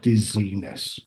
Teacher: >> So, normally the ness >> is added to the end. So, the the last syllable is a little bit longer